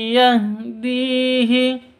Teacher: cara bacanya langsung masuk ke ya seperti itu disertai dengung dua ketuk